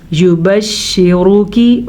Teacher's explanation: را کو پر پڑھنا ہے اور کاف زیر کی پڑھنا ہے